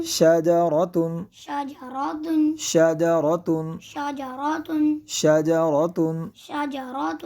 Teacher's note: یہاں پہ ہم نے را کو پر کیا، جیسے کہ ہم پہلے بتا چکے کہ را پر زبر ہے اس لیے اس کو پر کریں گے